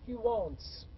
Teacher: the S becomes S as it is when it is preceded by a voiceless sound like T, so I say he wants.